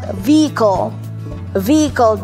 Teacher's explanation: Drinap yung H sound.